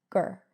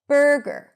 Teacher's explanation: For example, if we take the word burger, we have the stir sound at the beginning, burr, and then we have a schwa r at the end, gur. So it's going to be shorter and softer and lower in pitch.